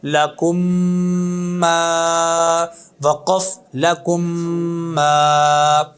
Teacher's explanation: میم ساکن کے بعد دوسری میم آ جائے تو پہلی میم کو دوسری میم میں داخل کر کے ادغام کر کے غنے کے ساتھ ادا کریں گے، جیسے پہلا حرف ہے لام زبر لا، کاف پیش میم کم، لکم، میم زبر الف ما، لکم ما، وقف لکم ما۔